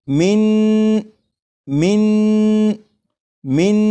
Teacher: नून की जब अदायगी होगी तो नून को पढ़ते हुए ज़बान तालू से लगे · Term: ज़बान तालू से लगाकर